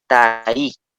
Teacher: Acá letra se dice tai, pronunciando la última vocal con mayor fuerza de voz.